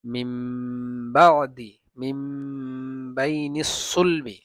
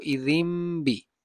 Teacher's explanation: নুন সাকিন বা তানউইনের পরে যদি বা আসে, মিম দ্বারা পরিবর্তন করে পড়তে হয়, আবার এটাকে গুণনাও করতে হয়।